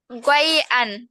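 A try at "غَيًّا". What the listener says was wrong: আন হবে না ইয়ান হবে বলো তো? গইয়ান, গইয়ান। গইয়ান, ইয়ান, ইয়া আলিফ দুই জবর ইয়ান, গইয়ান, গইয়ান।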